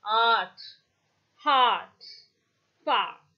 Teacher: what happens is this ah is the back open unrounded vowel when you pronounce ah also your lips will not be rounded so it is called as unrounded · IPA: /ɑ:/